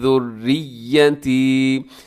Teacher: ज़ुर्रिय्यती इसको मजबूती के साथ आपने पढ़ना है, थोड़ा सा लंबा भी कीजिएगा क्योंकि आखिर में या है